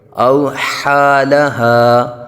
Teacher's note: اوحا حلق کے درمیان سے اور ہا حلق کے نیچے والے حصے سے